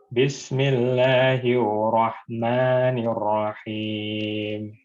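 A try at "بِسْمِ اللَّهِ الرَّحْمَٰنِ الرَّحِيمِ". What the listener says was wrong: Nanti haknya dilembutin dikit. Rahim gitu ya.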